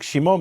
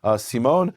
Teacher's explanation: Greek doesn't have a sh sound, so it becomes a S. Just like Shimon becomes Simon.